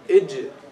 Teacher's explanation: If you touch the roof of the mouth with the middle part of the tongue, ij. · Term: Jim